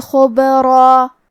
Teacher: خا کی ادائیگی حلق کے اوپر والی حصے سے ہے، خا حروف التفخیم میں سے ہے، لہذا ہمیں خا کو موٹی آواز میں پڑھنا ہے. حرف البا کو قلقلہ سے پڑھیں گے کیونکہ اس پہ جزم ہے.